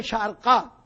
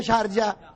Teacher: وہاں قاف جیم میں بدل جاتا ہے